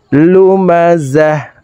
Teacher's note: ওয়াকফের ক্ষেত্রে হার উচ্চারণ করব এবং হাকে সাকিন করে ফেলব। লুমাযাহ, হার উপরে জজম ব্যবহার করব।